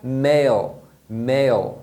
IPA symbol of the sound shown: eɪl